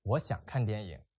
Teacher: And the declarative sentence has a falling intonation.